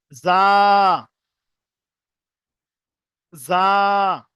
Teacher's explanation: যখন জাটা উচ্চারণ করবেন, জিভের আগাটা গিয়ে উপরের দাঁতের গোড়ার সঙ্গে লাগবে। জা, জা, ঠিক এরকম ভাবে উচ্চারণ করবেন।